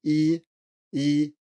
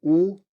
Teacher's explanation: you should feel that your tongue is pretty far forward and if you say ooh you should feel that it's pretty far back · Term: position of the tongue